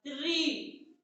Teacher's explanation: जब हम री का उच्चारण करते हैं तो हमारी जीवा पीछे चली जाती है, और हमारा जो आवाज है कंठ से, वो कंठ से थोड़ा सा और आगे यहाँ मूर्धन्य से निकलता है री। · क्यों, क्योंकि जब हम री का उच्चारण करते हैं तो हमारी जीवा पीछे चली जाती है, और हमारा जो आवाज है कंठ से, वो कंठ से थोड़ा सा और आगे यहाँ मूर्धन्य से निकलता है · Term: मूर्धन्य स्वर